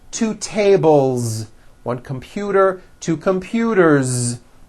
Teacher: 1 door, 2 doors, with a voiced Z ending.